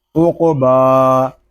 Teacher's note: الف تک کھینچ کر پڑھیں گے کیونکہ با کے اوپر کھڑا زبر آ رہا ہے